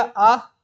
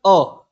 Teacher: आ से अ थोड़ा कम खुलता है, पूर्ण न होके आधा ही खुलता है, तो ये क्या हो गया अ, माफी चाहता हूं मैं, अ यहाँ पे आएगा।